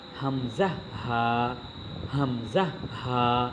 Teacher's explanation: এক নম্বর মাখরাজ হলকের শুরু হইতে উচ্চারিত হয়